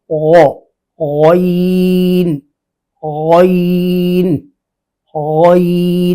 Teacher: ان دونوں کا مخرج اقصائے حلق ، یعنی نیچے والا حصہ ابتدائے حلق، درمیان والا درمیان حلق،